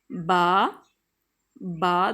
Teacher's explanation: बा जो है वो दोनों होंठों की तरी मिलने से अदा होता है